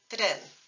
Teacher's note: But in Spanish, we stick with a T, and then we use that little quick R sound from the tip of the tongue. So remember, oro and train is tren, tren. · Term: Spanish single R